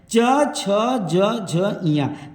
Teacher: च वर्ग तालव्य, तालु से इनका उच्चारण होता है, ये स्पर्श संघर्षी कहलाते हैं।